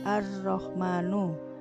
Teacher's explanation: lamnya tidak terbaca tetapi lebur ke dalam huruf ro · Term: samsiah